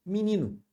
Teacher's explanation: A gente reduz o E para I e o O para U. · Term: redução